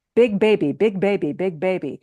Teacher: In English, when you say big baby and you put your hand in front of you, you can hear a puff of air.